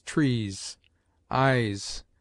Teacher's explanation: S single at the end of words has a grosser sound, like that of z